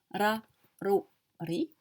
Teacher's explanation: c'est un R roulé. Il n'est pas très roulé, moyen.